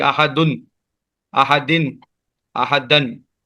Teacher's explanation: تنوین آ گیا تو پھر اس میں تنوین میں آخر میں نون ساکن ہوتی ہے